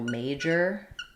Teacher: when I have a word just ending in O R, like for example, major, usually this is unstressed